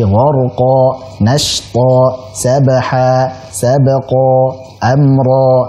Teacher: Panjangnya dua harakat saja. Jadi jangan terlalu panjang. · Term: mad iwad